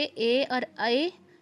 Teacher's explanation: कंठ प्लस तालु से ए और ए उच्चारित होते हैं।